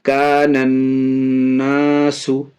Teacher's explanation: نون میں تشدید ہے، اس لیے نون اور میم اگر مشدد ہو تو گنہ ہوگا، ناک میں آواز جائے گی، اس لیے ناک میں آواز یہاں لے جا رہے ہیں، گنہ کر کے پڑھ رہے ہیں۔